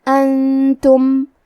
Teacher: کلمت انتم میں نون ساکن ہے، پھر حرف التا ہے، تا حروف الاخفاء میں سے ہے، لہذا ہم یہ حکم کو غنہ کے ساتھ ادا کریں گے۔